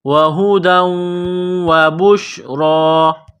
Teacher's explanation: یہ گول ہا ہے چشمے والی، صرف منہ سے ہوا نکالنے کی طرح اس کو پڑھیں گے۔ وہدا، دال کو واو کے ساتھ ملانا ہے، واو کو دبانا ہے۔